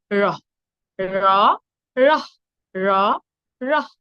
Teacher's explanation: মহাপ্রাণ ধ্বনি তাই বেশি পরিমাণে বাতাস নির্গত হয়ে উচ্চারিত হবে